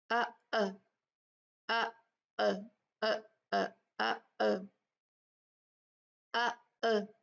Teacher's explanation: जब हमजा साकिन होता है तो वोकल कोड सख्ती से ऐसे बंद होती है कि जरा सी हवा और आवाज भी वहां से नहीं निकलती